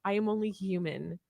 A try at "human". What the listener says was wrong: Human, not human. You said human. there's no silent. There's no silent H in human.